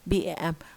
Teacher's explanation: We find that it is the voice answer time is short because our vocal folds start voicing while pronouncing the B sound, because it's a voice sound